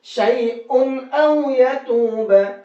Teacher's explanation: جب تنوین کے بعد میں حمزہ آیا تو اب اس تنوین کو صاف صاف پڑھیں گے، اب غنہ اخفا نہیں کریں گے